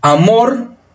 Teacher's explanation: El acento está en la segunda y específicamente los acentos están en la vocal. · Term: acento prosódico